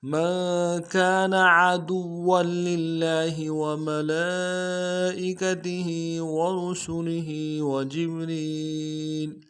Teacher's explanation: من كان من میں میم کو نون ساکن کے ساتھ ملانا ہے، نون ساکن میں غنہ کریں گے. کانا میں کاف کے ساتھ الف مدہ ہے، ایک الف دال میں کھینچیں گے.